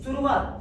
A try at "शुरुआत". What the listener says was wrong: अरे शिरोमणि में जो श लगता है वो बोलिए, शिरोमणि का श। शिरोमणि नहीं, शिरोमणि। अरे तुम सबूत का स बोल रहे हो और मुझे शिरोमणि वाला श चाहिए।